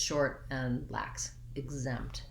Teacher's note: I have this lax I vowel. It sounds kind of like it's the same vowel as in did and in, and it's short and unstressed. And then the where my stress starts is on my Z sound, exempt.